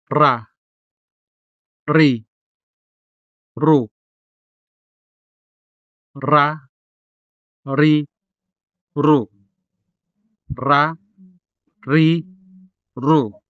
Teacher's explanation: Ra has a hard and rolling sound, as in ra, ri, ru, ra, ri, ru, ra, ri, ru.